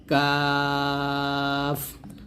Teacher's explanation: কাফটা হচ্ছে জিহ্বার গোড়া থেকে একটু আগের অংশটি তার বরাবর উপতালুর সঙ্গে লাগিয়ে এই কাফ উচ্চারণ করতে হবে পাতলা করে,